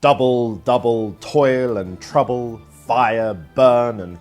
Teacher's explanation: the two syllable long trokey a stressed syllable followed by an unstressed one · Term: trochee